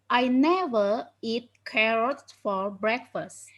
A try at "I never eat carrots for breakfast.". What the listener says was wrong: Carrots, ada S-nya once again.